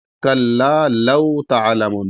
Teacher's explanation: کلا لو تعلمون، کلا یہاں پر بھی چھوٹا کاف ہے اور لام مشدد ہے، لام کے بعد الف ہے، تو اس کو ایک الف کے اوپر کھینچ کے پڑھیں گے. کلا لو، یہاں پر لام کے بعد واو ساکن ہے، تو اس وجہ سے جو ہے یہاں پر ایک الف کے اوپر کھینچ کے پڑھیں گے. کلا لو تعلمون، بس لو ایسے کریں گے.